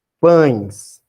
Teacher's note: Então, o E, ele está representando a semivogal I. O som do E é o I.